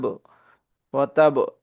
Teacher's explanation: এখানে কলকলার হরফ বা এখানে আমরা ধাক্কা দিয়ে পড়বো।